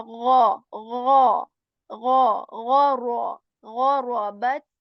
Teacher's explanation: So غا comes is articulated from the portion of the throat which is the upper portion, which is near to the mouth